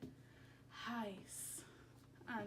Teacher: you'll use extra air when you say each word, and it almost comes out sounding like an H sound. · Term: easy onset